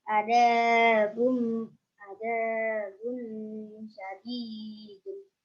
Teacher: Alasannya karena doma tanwin bertemu dengan shin. Cara bacanya samar dengung 3 rokat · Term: ihfa